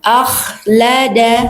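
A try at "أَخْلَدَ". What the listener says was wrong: Tinggal Bu, A-nya tipiskan ya.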